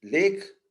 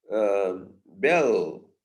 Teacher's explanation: it's got a velarized L sound, which is called dark L